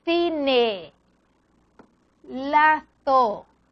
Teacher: interdental sorda, porque entre los dientes